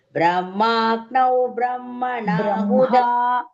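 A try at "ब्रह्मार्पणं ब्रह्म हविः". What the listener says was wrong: No, I am not hearing. No, I could not hear. Ha and ma both. You are missing.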